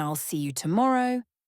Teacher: For example, in I'll see you tomorrow, see and tomorrow are stressed while I and you are said super fast. This creates a bouncy rhythm that can feel overwhelming at first, but with practice, you'll start to hear the beat of English. · in I'll see you tomorrow, see and morrow are stressed, while I'll and you are said super fast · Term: stress-timed